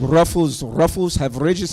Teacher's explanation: Resh is the R sound. Resh. And we roll your resh.